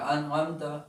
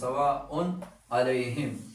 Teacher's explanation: لکه انعمت، نو دلته کې انعمت کې دا نون چې کوم دی نو دا ساکن دی او د حروف حلقیونه چې کوم دی نو غین راغلی دی، نو دې کې به اوس موږ اظهار کو انعمت غنه او اخفا به پکې نه کو